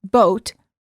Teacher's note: The o sound. For the o sound, as in boat, the lips are rounded and tense.